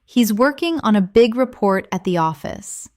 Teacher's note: Stress working, big, report, and office. This will help you speak with a natural English cadence instead of sounding too flat or robotic. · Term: rhythm